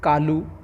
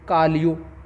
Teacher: राजस्थानी जो भाषा है ये ओकार बहुला है। ओकार बहुला का तात्पर्य है जो शब्दांत है, शब्दांत में ओ का उच्चारण होता है। जैसे कालू, कालू का उच्चारण होगा, या राजस्थानी में कालियो।